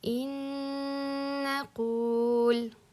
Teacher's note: Ya'ni in naqul deb turib ikkita nun aytilinmaydi. Bir-biriga kirib ketadi va g'unna kerak bizda.